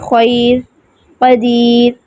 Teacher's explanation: اب را موقوفہ سے پہلے یا ساکن ہو تو را باریک پڑھی جائے گی، یعنی را وقف کی صورت میں ہمارے پاس را ساکن ہے، اس سے پہلے یا ساکن آ گیا ہے تو را باریک پڑھی جائے گی